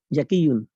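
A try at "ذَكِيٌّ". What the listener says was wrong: জাকিয়ুন না, যাকিয়ুন, হ্যাঁ, জাল। যাকিয়ুন, যাকিয়ুন, যাকিয়ুন।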